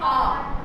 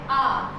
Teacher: आ एक ऐसा स्वर है जो हमारी बोलते समय हमारी जीभ के बीच वाले हिस्से का प्रयोग किया जाता है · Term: मध्य स्वर